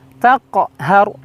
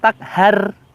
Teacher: setelah huruf ha itu mulut kita kembali ke posisi huruf ro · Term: Ha ro mati